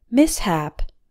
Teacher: Although this word has sh, we don't pronounce it like sh. We pronounce the s and the h in separate syllables.